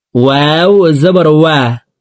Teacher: ওয়াও হরফকে দুই ঠোঁট গোল করে দুই ঠোঁটের মাঝে ফাঁকা রেখে পড়তে হবে।